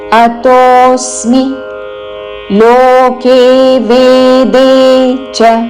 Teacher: లోకే వేదే నాలుగు దీర్ఘ అక్షరములు చ రస్వము